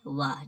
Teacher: दंत प्लस ओष्ठ, ये वाह जो बोला जाता है